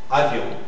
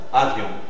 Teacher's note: A, V, semi-voyelle iode, O nasal